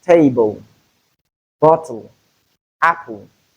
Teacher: Whenever you have LE at word final position, for instance, in table, bottle, apple, the LE there is realized as U. So the alveolar lateral, which is realized as U, is the sound we have in place of LE in these words.